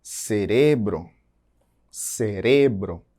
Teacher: Percebam que está grifado aí de vermelho que a sílaba mais forte está em re